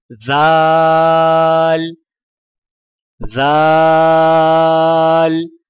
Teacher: دال، زبان کی نوک کو سامنے والے اوپر کے 2 دانتوں کی جڑ سے لگا کر باریک آواز میں پڑھیں، یعنی دال دال۔ زال، زبان کی نوک کو سامنے والے اوپر کے 2 دانتوں کے اندرونی کناروں سے نرمی سے لگا کر باریک آواز میں پڑھیں